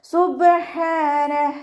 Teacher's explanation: മഹറജ് വരുന്നത് വസത്തുൽ ഹൽക് തൊണ്ടയുടെ മധ്യഭാഗം സൗണ്ടിനെ വ്യക്തമാക്കിയിട്ട് ഉച്ചരിക്കട്ടോ സുബ്ഹ എന്നുള്ള സൗണ്ട് തന്നെ കൊടുക്കുട്ടോ സുബ്ഹാന ഇവിടെ വക്കഫിന്റെ ചിഹ്നമായിട്ടുള്ള സില വന്നിട്ടുണ്ട്